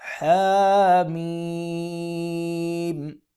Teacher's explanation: میم کو 5 الف کے برابر یا 4 الف کے برابر لمبا کریں گے اور حا کو 1 الف کے برابر لمبا کریں گے